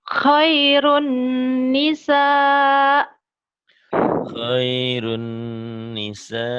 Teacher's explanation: Ini idgham bi gunnah. Idgham dimasukkan, dileburkan, disertai dengan dengung.